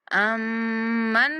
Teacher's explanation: مشدد میم پر غنہ کریں گے